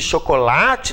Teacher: chocolate tem um acento tônico no lá